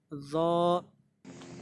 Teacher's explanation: ज़बान की नोक और ऊपर वाले दांतों का सिरा, जो ऊपर वाले दांतों की नोक है, वहाँ पे ज़बान को टच करेंगे तो उससे ज़ा निकलेगा